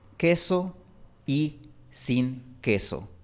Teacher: Entre la palabra queso y la palabra y se forma un diptongo. Prácticamente estamos formando aquí una sílaba soy.